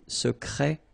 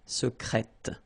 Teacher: Okay, you're pronouncing the T.